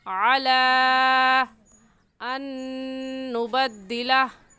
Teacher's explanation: इस मद को 3 अलिफ की मिकदार खींच कर पढ़ेंगे, ना इससे कम और ना ही इससे ज़्यादा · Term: मद्द मुनफसिल